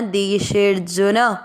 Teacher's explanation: आपको मात्रा को लंबा खींचते हुए आधा र पढ़ना, देशेर्जुन। जू की मात्रा छोटी है, न में मिक्स करना